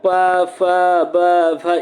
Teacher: जिसका उच्चारण करते समय दोनों ओष्ठ आपस में टकरा जाए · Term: ओष्ठ ध्वनियाँ